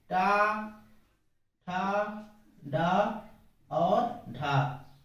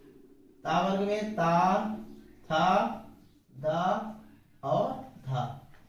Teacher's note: इनके उच्चारण में मुख में वायु कहीं ना कहीं टकराती है, लेकिन उनका कोई घर्षण नहीं होता है, इसलिए इनको जो है स्पर्शी कहते हैं या स्फोट व्यंजन कहते हैं। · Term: स्पर्शी व्यंजन